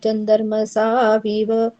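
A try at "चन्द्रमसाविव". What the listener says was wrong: चंद्र, चंद्र नहीं, अपनी भाषा को यहाँ मत जोड़ो, चंद्र मसावी, चंद्र चंद्र चंद्र, वो आदतें पड़ी हुई है ना, चंद्र मसावी। वो सतर्क रहोगे ना तो हो जाएगा।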